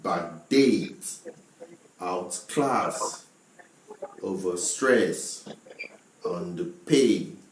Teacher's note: we have the stress on the second syllable or the second word of the compound word